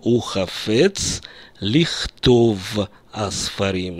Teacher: вместо «ле» произносится «ли» предлог, правда? Я произношу «ухафец лихтов асфарим».